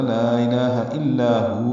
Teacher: ایسے نہیں ہوتا، لا الہ الا ہو اکٹھا ہی پڑھنا ہے، الا میں لا الف مدہ ہے، 2 حرکات لمبا ہے ، ہو میں واو اگر رکنا ہو تو یہ ساکن ہو